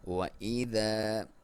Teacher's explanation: وا کو ہونٹوں کی گولائی سے پڑھیں گے